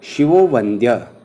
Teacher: ओ भाव अर्थात विसर्ग को ओ हो जाना, जैसे शिवः जमा वंद्य अर्थात शिवो वंद्य, यहाँ पर विसर्ग को ओ हो गया है।